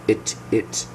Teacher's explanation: Very short I sound. Notice my mouth is very relaxed.